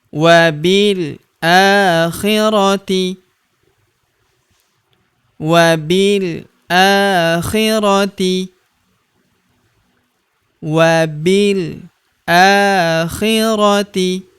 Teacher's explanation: huruf a kita panjangkan dua harakat karena terdapat tanda alif kecil di atasnya